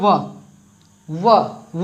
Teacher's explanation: वह जो है दंत और ओष्ठ से होता है इसका उच्चारण